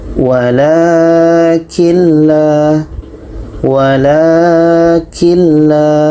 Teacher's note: Walakin la, nun mati bertemu la, tidak dengung.